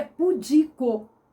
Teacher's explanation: A tonicidade dela está no I, na penúltima sílaba, o di. A vogal é que é tônica, tá no i. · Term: acento prosódico